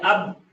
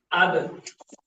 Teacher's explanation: جب یہ ساکن حالت میں ہو تو ہم اس کو جنبش دے کر ادا کریں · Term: صفت قلقلہ